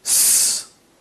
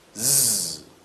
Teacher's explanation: Those two sounds are made in the same manner and in the same place, and here we have an instance where, again, one is voiced and the other is not.